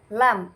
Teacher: ujung lidah bertemu dengan langit-langit atas yang berhadapan dengan ujung lidah tersebut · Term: huruf lam